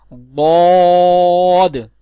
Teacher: اس کا مخرج ہے زبان کی کروٹ اور اوپر کی داڑوں کی جڑ سے ادا ہوتا ہے، جیسے ضاد، یعنی زبان کی سائیڈز اوپر کی داڑوں کی جڑ سے لگاتے ہیں، جیسے ضاد۔ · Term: حرف حافیہ